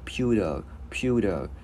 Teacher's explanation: Chữ T biến thành chữ D tiếng Việt nhẹ